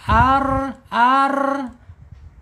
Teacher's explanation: Rnya bergetarnya sedikit saja 2 sampai 3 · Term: takrir